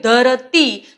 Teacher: ધરતી તો ઈ ખેચાય છે એટલે એ દીર્ઘ લખી શકાય